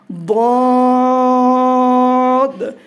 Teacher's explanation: জিহ্বার গোড়ার কিনারা উপরের মাড়ির দাঁতের গোড়ার সঙ্গে লাগিয়ে উচ্চারিত হয় একটি অক্ষর তথা দদ।